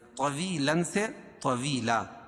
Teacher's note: 2 زبر کی تنوین پر جب وقفہ کریں گے تو ایک زبر کے قائم مقام الف پڑھیں گے